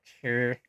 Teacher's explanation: it has the strong R the retroflex sound